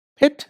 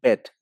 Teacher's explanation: You have the p sound in pit, so it's an unvoiced sound, p. You have the b sound in bit, so b is a voiced consonant.